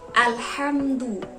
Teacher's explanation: Dan kita juga harus memperhatikan makharijul huruf ha di kalimat alhamdu. Pada huruf H itu makhrajnya berada di tenggorokan bagian tengah. Jadi kita harus bacanya alhamdu, jangan alhamdu.